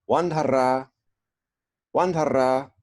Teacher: actually you got to roll the R a little bit here